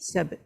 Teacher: Ba dia huruf yang melantun. Tolak terus kepada ta.